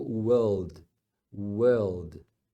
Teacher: no inglês britânico eles normalmente não pronunciam o r no meio e no final que que acontece eles alongam a vogal